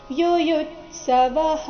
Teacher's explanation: ಯುಯುತ್ಸವಹ ಎರಡನೇ ಯು ಮೇಲೆ ಆಘಾತ ಬರಬೇಕು · ಸಮವೇತಾ ವೇ ಮತ್ತೆ ತಾ ದೀರ್ಘ ಬರಬೇಕು. ಯುಯುತ್ಸವಃ ಎರಡನೇ ಯು ಮೇಲೆ ಆಘಾತ ಬರಬೇಕು, ಮುಂದೆ ಅರ್ಧತ ಮತ್ತೆ ಪೂರ್ತಿ ಸ ಈ ಎರಡು ವ್ಯಂಜನಗಳಿಂದ ಕೂಡಿದ ಸಂಯುಕ್ತ ಅಕ್ಷರ ಬಂದ ಕಾರಣ ಯುಯುತ್ಸವಃ.